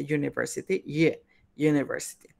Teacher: el primer sonido de esta palabra es el de una semivocal, que es el de y.